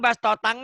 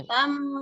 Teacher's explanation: Bibirnya jangan ngebuka. Kalau ngebuka jadi eng. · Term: ikhfa